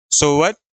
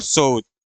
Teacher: जैसे इसमें लिखा हुआ है कि मध्य में आया वा के स्थान पर उ उच्चारित होता है, ऐसे ही सोवत और सोउत, वा को हटा के उ लिख दिया गया है।